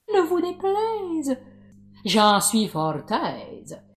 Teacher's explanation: Le seul exemple de diphtongue fermante de notre corpus est le ei de « Ne vous déplaise, j'en suis fort aise ».